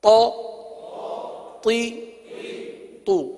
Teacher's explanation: پیش کی ادائیگی ہونٹوں کو گول کر کے ادا ہوتی ہے، اس لیے پیش میں ہونٹ گول ہو رہے ہیں